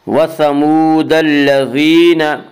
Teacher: التي لم يخلق مثلها في البلاد وثمود الذين جابوا الصخر بالواد وثمود الذين, وا مدہ وہ واو جو ساکن ہو اس سے پہلے پیش ہو, وا مدہ کو ایک الف کے برابر کھینچ کر پڑھیں گے